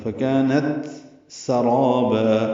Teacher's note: فکانت سرابا، تا الگ ہے، سین الگ ہے، فکانت سرابا یہ غلط ہے، فکانت سرابا. را الف مدہ ہے، 2 حرکات لمبا ہے، اور با مد عوض یہ بھی 2 حرکات لمبا ہے